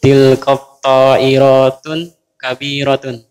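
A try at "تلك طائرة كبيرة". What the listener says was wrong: Bidu di tanwin. Tanpa tanwin. Tilka ta'iratu.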